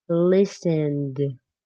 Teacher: Instead looked, the ed sounds like a t like really strong. looked but listened ends with a D sound less strong than looked